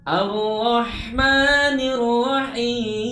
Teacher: Seringkali huruf H dibaca dengan suara memantul. Pastikan huruf H kita baca dengan suara mengalir keluar dari tenggorokan dan melepasnya bersama-sama dengan bunyi huruf ma.